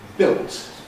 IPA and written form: bɪlt (built)